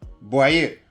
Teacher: The vowels press right into each other and compress. Voy a ir. Whole phrases become one sound.